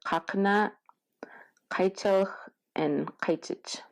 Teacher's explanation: the Q is pronounced in your throat. So it kind of sounds more breathy